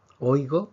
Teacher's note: aquí tenemos un diptongo porque tenemos una vocal fuerte con una vocal débil por lo tanto aquí tenemos dos sílabas hoy go en oído